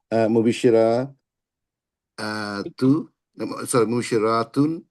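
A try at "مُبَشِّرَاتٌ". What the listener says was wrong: Exactly, হ্যাঁ, just এখানে একটা একালিফ টান হবে, হ্যাঁ। আর এখানে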